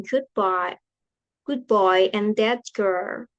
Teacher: Explanation in regressive assimilation sound change because of the sounds that follow it. T becomes B before B, T becomes K before G